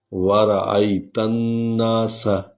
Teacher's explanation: سین کی سیٹی کی آواز نکلنی ہے